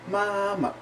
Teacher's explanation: the fifth tone basically is like an unstressed syllable like you don't say it you don't stress it enough for there even to be really like a tone with it